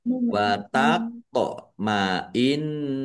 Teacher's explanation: nun tasdid bacaan ghunah atau mendengung ditahan biar tampak mendengungnya · Wat sukun bacaan qalqalah dibaca pantul ditampakkan pantulannya.